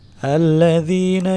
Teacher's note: Selanjutnya alladzina nah, di sini ada sifat huruf rokhawah rokhawah itu jadi masih ada bunyinya masih ngeglosor gitu, bunyinya masih ada udara keluar dari sela-sela gigi